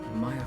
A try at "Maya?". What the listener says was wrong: By the way, when you said Maya, it's supposed to be a question.